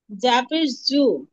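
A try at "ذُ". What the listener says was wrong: না, এটা যা না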